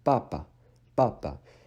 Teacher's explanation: you need to make sure that you don't breathe out that little puff of air that you normally breathe out in English